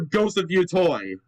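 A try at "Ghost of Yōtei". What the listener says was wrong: You are not pronouncing it correct. Bro, the name is it's fucking phonetic. Yo Toy. Where's the other O in Yo Toy?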